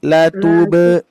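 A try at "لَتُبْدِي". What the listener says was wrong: Nah, itu ya. Kurang kuat, Pak. Bu, kurang kuat. Latubdi. Apa coba kita fokus di sini dulu ya. Latube. Dibekan. Latube. Nah, sekarang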